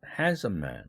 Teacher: handsome을 강조하기 위해서는 handsome man 하고 handsome의 일강세를 배정했죠. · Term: 강조 강세